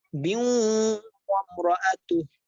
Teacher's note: যখন দুই আয়াত মিলে পড়বে তখন গুণনা হবে, আর অক্ফ করলে গুণনা হবে না